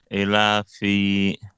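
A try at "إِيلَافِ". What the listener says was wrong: Yes, but you need to stretch it more.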